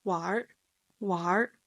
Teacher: There's a slight R sound attached to the verb 玩, and it turns into 玩, 玩.